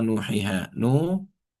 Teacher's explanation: mad tabi'i dan panjangnya 2 harokat. Ya, tidak boleh lebih dan tidak boleh kurang.